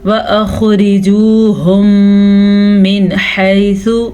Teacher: دونوں میم کو آپس میں ملا دیتے ہیں، غنے کے ساتھ ملاتے ہیں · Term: ادغام شفوی